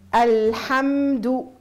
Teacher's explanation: الميم الساكنة عندهم جريان جزئي للصوت، يعني إن نقول الضخامة تجي في الصوت.